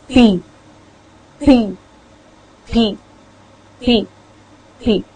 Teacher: So mouth is closed first, then it is released with subsequent air coming out.